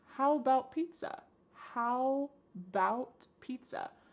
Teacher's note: The first A in the word about is gone. It's just missing. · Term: reduced